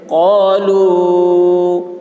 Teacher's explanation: قاف کی آواز موٹی ہوگی، لام کو کھینچیں گے مد ہے